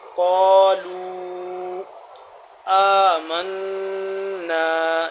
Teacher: قا، کاف موٹا ہے، لام بہو پیش، لام بہو مد پیش، لو مد ہے 2 سے 3 الف کے برابر